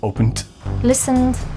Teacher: If it ends in a voiced consonant, then they use the voiced d sound at the end. You can say opened, but it's very difficult to pronounce a t after an n.